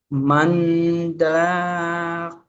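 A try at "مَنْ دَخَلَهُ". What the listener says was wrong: আপনি দা খ লা টান কোথায়তে পেয়েছেন, দিচ্ছেন?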